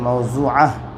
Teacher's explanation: گول تا پر وقف کرے تو ہائے ساکنہ بن جاتی ہے